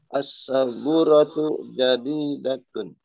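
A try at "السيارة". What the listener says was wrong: Bukan as-sabura, ini as-sayyara.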